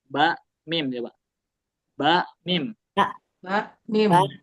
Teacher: ya gigi seri atas bertemu perut bibir terus wau ba mim ini. Nah dia menggunakan dua bibir baru ya. Dua bibirnya ini bersentuhan.